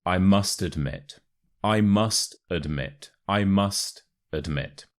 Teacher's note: the important word here is admit so the a becomes a uh so it's not admit it's admit and the stress is on